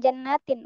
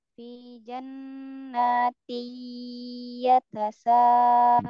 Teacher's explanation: Di tanwin ketemu ya, jadi idgham bi gunnah. Jadi di idgham kan ya, dileburkan langsung ke huruf ya-nya. Ditahan gunnah.